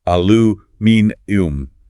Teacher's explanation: Yes, that goes beyond a mere shift in vowel sounds. The British version literally inserts an entirely extra syllable into the word, aluminium.